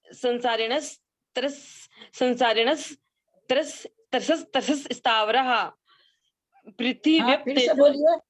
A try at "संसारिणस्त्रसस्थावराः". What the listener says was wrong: त्रसस क्यों बोलेंगे आप? सीधा ही तो है, संसारिणस त्रस स्थावरः। आगे थावरा बोलना पड़ेगा, है ना? संसारिणस त्रस स्थावरः। संसारिणस त्रस स्थावरः,